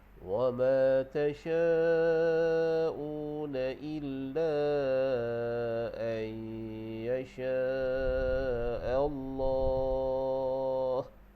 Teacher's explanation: Wa ma tasha'u, tasya' tu dia jadi mad wajib muttasil. Jadi panjang ni kita ambil 4 harakat.